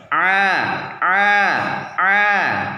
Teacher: rongga tenggorokan bagian tengah lebih menyempit daripada ketika mengucapkan huruf ha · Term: huruf Ain